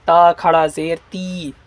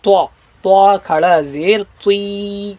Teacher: طوا کو کیسے پڑھیں گے؟ منہ کو بالکل گول کر کے پڑھیں گے، طوا کھڑا زیر تی، اس طریقے سے، ایسے نہیں کہ تا کھڑا زیر تی، طوا کھڑا زیر تی، بالکل اس طریقے سے۔